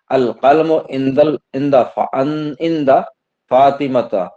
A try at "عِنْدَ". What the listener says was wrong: عند نہیں، عین نکالا کیجیے. عند عند